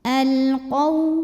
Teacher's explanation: waw sukun didahului baris fathah, maka dibacanya lembut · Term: harfulin